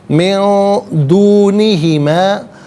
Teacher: من میں نون ساکن ہے، اس کے بعد دال حرف اخفا آ رہا ہے، تو نون ساکن کو اخفا کے ساتھ پڑھا جائے گا. اخفا کہتے ہیں ناک میں آواز لے جا کر گنگنانا.